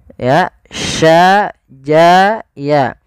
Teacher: Kita sesuaikan makhraj daripada huruf shin. Makhrajnya adalah tengah lidah kita. Ja, sya, ya itu tengah lidah.